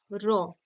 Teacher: এটা উচ্চারণের সময় যে কম্পন সৃষ্টি হচ্ছে একটা, র, মূর্ধাতে গিয়ে একটা কম্পন সৃষ্টি হচ্ছে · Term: কম্পিত